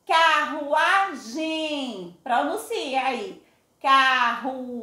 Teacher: o M e o N no final da sílaba faz com que a vogal seja pronunciada com som nasal.